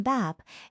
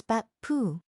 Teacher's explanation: And every final is held, not released.